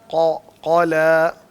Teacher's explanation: क़ा बिल्कुल काफ के साथ होता है, जहाँ काफ निकलता है ना उसके बिल्कुल साथ पीछे।